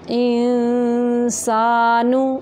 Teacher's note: أَثْقَالَهَا، وَقَالَ الْإِنسَانُ، وَقَالَ الْإِنسَانُ، یہاں پہ ان پہ اخفا ہو رہا ہے، آواز کو، نون کی آواز کو چھپا کے ناک سے نکالیں گے۔